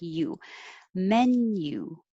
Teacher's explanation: men you so it just looks like a letter u but you're really pronouncing it like a y u your tongue starts high and comes down